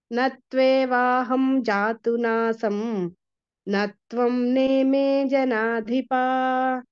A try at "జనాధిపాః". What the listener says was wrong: జనాధిపాహ విసర్గ ఉంది అక్కడ. నత్వేవాహం జాతు నాసం నత్వం నేమే జనాధిపాహ విసర్గ ఉందండి అక్కడ.